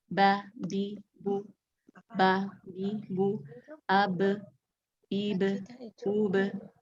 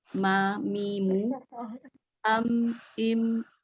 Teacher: Tadi kita baru sampai ke makhraj bibir ya. Nah, di antara dua bibir keluar huruf ba dan mim